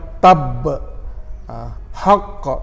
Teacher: Dia ada bunyi, ialah dia sebenarnya sudah mati, tapi oleh kerana dia qalqalah, dia ada bunyi macam hidup balik tu.